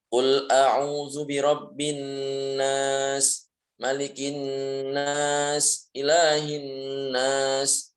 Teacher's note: mim tasydid dan juga nun tasydid ini adalah ya harus dibaca gunnah sepanjang 2 harokat